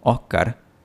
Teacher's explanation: cuando pronunciamos «Óscar» como [ˈoh.kaɾ], esto es aspiración. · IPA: [ˈoh.kar]